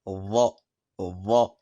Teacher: Quant au dha, il ressemble au dhal, sauf que le fond de la langue monte vers le palais, ce qui crée cette sonorité grave.